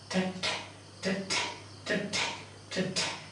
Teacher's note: In this case, the arrangement is unstressed, stressed, unstressed, stressed, like that. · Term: iambic meter